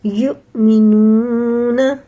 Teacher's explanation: واو ساکن سے پہلے پیش ہے تو یہ بھی حرف مدہ میں سے ہے، اسے بھی تھوڑا سا الٹے پیش کی طرح کھینچ کے پڑھیں گے۔